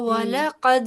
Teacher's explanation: جیسے قد کہا، کاف موٹا کہا، دال پہ کلکلا کیا